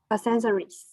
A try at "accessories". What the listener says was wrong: accessories. Accessory, not sen. There's no n. There's no n. So excess.